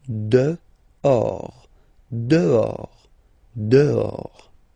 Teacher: Okay, so remember, final S not pronounced, and then this H in French doesn't exist phonetically, so you don't pronounce it